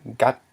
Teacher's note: So we have thus we have a rising tone. So the word is pronounced as gat